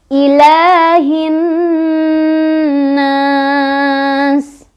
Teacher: Bacanya dipanjangkan boleh 2, boleh 4, boleh 6. · Karena ada alif lam menghadapi huruf syamsiah yaitu nun. Jadi alif lamnya tidak dibaca melainkan kita langsung baca ke huruf syamsiahnya yaitu nun. Cirinya adalah huruf syamsiahnya bertasydid ya. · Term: mad arid li sukun, alif lam syamsiah